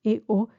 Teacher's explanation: dos vocales diferentes abiertas e o que tampoco van a formar una sola sílaba Ese es el iato y aquí se rigen por la acento